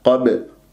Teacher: والباء سكنت في وسط الكلام قلقلة صغرى، أضرب المخرج وأهرب، ما أمسك الباء